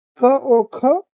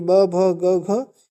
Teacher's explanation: क और ख ये दोनों घोष वर्ण नहीं है, बाकी ब भ ग घ ये सभी घोष वर्ण है।